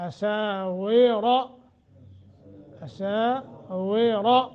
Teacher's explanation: من اساور، سین کے آگے الف، 1 الف کے برابر مد. واو را دونوں موٹے کر کے پڑھیں گے